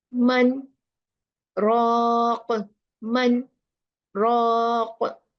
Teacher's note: Here we do izhar of noon, then take a pause. Seen means sakta.